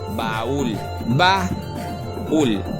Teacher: Automáticamente sabemos que es de dos sílabas. La separamos porque la fuerza de voz la llevo en la segunda vocal, no en la primera. Por ende, la separo y esto automáticamente nos lo convierte al separar esas dos vocales en un iato.